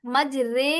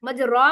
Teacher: रा माला हमेशा बारीक पड़ी जाती है, इसलिए कि रा की तफखीम का सबब जो फतह था वो खालिस, ये बारीक का मतलब यह है कि ये इसी तरीके से मज रे कर दिए तो ये बारीक होगी, मज रा पढ़ते तो मोटा हो जाता